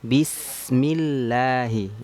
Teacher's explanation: Lalu ketemu dengan lafal Allah ataupun lafzul jalalahnya tipis, lamnya tipis. Kenapa? Karena sebelumnya terdapat huruf yang berharakat kasrah.